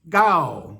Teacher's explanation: pronounced ga with a long vowel in a low tone